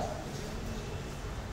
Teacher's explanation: hard palate, मुंह के छत का सबसे ऊपरी वाला हिस्सा, य बोलते हैं हम वहां से